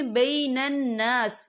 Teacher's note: قرح مثلہ وتلک الایام نداولها بین الناس، یا دیکھیں بین الناس، یہاں نون مشدد ہے تو یہاں پر غنہ ہوگا، اور یہاں پر الف مدہ بھی ہو رہا ہے، خال الف سے پہلے زبر ہے تو ہم اسے 2 یا 3 حرکت کے برابر کھینچیں گے